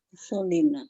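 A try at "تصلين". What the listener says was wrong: Tusolina. Ahsan.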